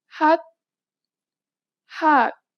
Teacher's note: This letter usually makes an H sound. In the 받침 position, you need to read it as T.